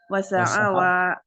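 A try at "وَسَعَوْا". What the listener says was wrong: Wawunya sukun.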